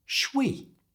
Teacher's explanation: should we was squashed together, so it became shwe.